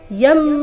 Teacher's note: ಯಂ ಅನುಸ್ವಾರದ ಉಚ್ಚಾರಣೆ ಮ ರೀತಿ